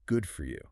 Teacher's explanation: You put the stress on the word good.